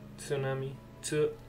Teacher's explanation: The T at the start is a very soft and almost unheard.